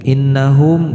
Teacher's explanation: gunnah dengung ditahan terlebih dahulu